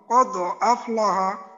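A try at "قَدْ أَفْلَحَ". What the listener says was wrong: এই এই দালের উচ্চারণটা করার সময় ঠোঁটটাকে আরেকটু খোলা রেখে আরেকটু যদি শক্ত করা যায়, যেমন কদ কদ আফলাহা, কদ আফলাহা, যেন এইখানে আচ্ছা দালের উচ্চারণটা কোনোভাবেই যেন ওকারের মতো না হয়, যেমন আমাদের এই একামতের মাঝে বলে না কদ ক, কদ কদ, তো এখানে যেন কদ ধরনের হয়ে না। কদ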